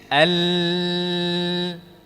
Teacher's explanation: Maksudnya pada huruf lam udara menyimpang dari arah kanan dan kiri. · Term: inhiraf